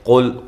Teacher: قاف کو موٹا، لام کو ہلانا نہیں ہے اور موٹا بھی نہیں کرنا لام کو